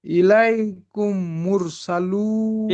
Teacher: ওয়াও মাদ্দাকে একালি পরিমাণ টান দিয়ে পড়তে হয়